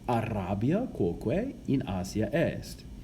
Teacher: you can hear that R that I keep trilling in Latin